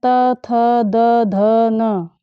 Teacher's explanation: ल और त वर्ग में जितने भी वर्ण आते हैं त थ द ध न और ल और स, इन सभी वर्णों का उच्चारण स्थान दंता, दांत को कहते हैं।